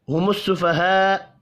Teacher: میم ساکن کے بعد ہا ہے اظہار شفی ہوگا. یہاں پر بھی غنہ نہیں ہوگا.